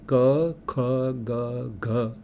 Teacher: કંઠ્ય ધ્વનિ વખતે જીભ જઈને પાછલા ભાગે લોચો થઈને પાછલા ભાગે ઊંચું જઈને ત્યાં આડે છે.